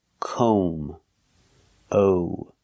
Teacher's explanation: We cannot use the short ah sound like hot and stop. Calm. We have to use the long O sound like no and go. We pronounce this word comb.